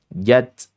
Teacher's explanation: Nah, jimnya ee syiddah dan juga dibacanya jahr.